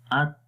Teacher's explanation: جب تا کے اندر شدت والی صفت آئے گی تو جب اس کو ہم پڑھیں گے تو اس کے اندر ایک دباؤ محسوس ہوتا ہے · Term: شدت کی صفت